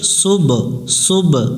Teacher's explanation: সিন বা পেশ সুব, সুব কলকলা করতে হবে, সিন অক্ষরটা শেষ দিতে হবে, বা এর উপর সুকুন আছে, এটা একটু প্রতিধ্বনি সৃষ্টি করব